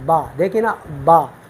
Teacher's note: اوپر والے ہونٹ جب نیچے ہونٹ کی تری والے حصے سے لگ جائے تو وہاں سے ہم با ادا کرتے ہیں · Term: بحری